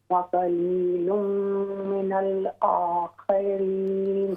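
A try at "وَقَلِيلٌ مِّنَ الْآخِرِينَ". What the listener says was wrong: ہاں جی، او کی بجائے یہ تھوڑا باریک کر دیں. وقلیل من الآخرین.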